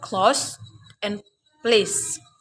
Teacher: By contacting the tip of the tongue into the alveolar ridge, so the air passes through by the side of the tongue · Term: laterals